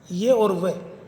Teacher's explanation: अर्धस्वर, जो कि जिसमें मुख द्वार संकरा रहता है परंतु इतना भी नहीं कि श्वास निकलने में घर्षण हो